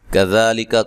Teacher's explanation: کاف کو باریک پڑھنا ہے، ذا مد اصلی ہے